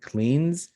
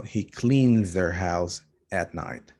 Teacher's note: He clean has the N, and the N is voiced. That's why cleans is supposed to have a Z ending. So he cleans their house at night.